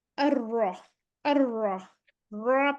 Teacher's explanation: जो है इसको हम मुफख्खम लिखा हुआ है, हम अभी पढ़ेंगे इसको रॉ को मैंने बताया कि आपने रॉ की साउंड निकालनी है, मोटा इसको कहते हैं, पढ़ना होता है। रॉ मोटी होती है जब इस पे जबर आ जाती है